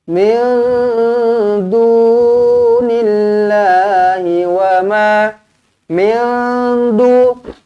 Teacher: Ikhfa hakiki, nun kosong bertemu dengan dal. Okey, dengungkan 2 harakat.